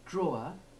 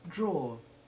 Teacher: a chest of drawers there is no difference in stress but in the first case the separate short e2 is clear and distinct but in the second it is just part of the weak r